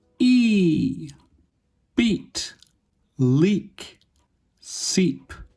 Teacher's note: The lips are unrounded and can be stretched a little bit. And the muscles of the tongue are tense. · it is produced with the tongue positioned high and in the front of the mouth. This is where it is located in the vowel quadrilateral. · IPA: /i/